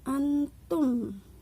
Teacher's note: Dan yang ketiga adalah ikhfa, yaitu nun sukun bertemu dengan huruf ikhfa yaitu ta, dibacanya samar